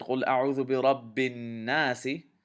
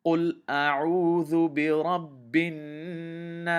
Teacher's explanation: I extended the alif sukoon to 4 counts, and seen I treated as if it has a sukoon on it.